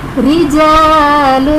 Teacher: را کے نیچے زیر ہے، را کو باریک پڑھیں گے